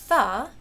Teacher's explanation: th, which is an interdental, voiceless fricative.